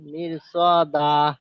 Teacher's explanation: হরফে মুস্তালিয়া 7টি হরফের মধ্যে একটি হরফ সদ এসেছে, তাই র সাকিনকে বারিক পড়ার কথা ছিল, কিন্তু র সাকিনের ডান দিকে জের আছে, র সাকিনকে বারিক পড়ার কথা ছিল। র সাকিনের পরে হরফে মুস্তালিয়ার 7টি হরফের মধ্যে থেকে একটি হরফ আসার কারণে র সাকিনকে পুর করে পড়তে হয়।